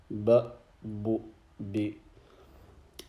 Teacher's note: Ba pronounced when the wet portion of the lips come together. So the inner part of the lips.